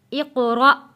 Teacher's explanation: جب بھی الف کے اوپر کوئی جزم آ جائے گی تو وہ الف نہیں رہے گا، اس کو ہم نے حمزہ پڑھنا ہے، اور حمزہ کو ہم نے جھٹکا دے کر پڑھنا ہے